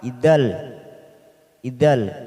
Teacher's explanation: Namanya bacaan idgham bila gunnah, hanya masuk tanpa mendengung, tanpa ditekan lama-lama.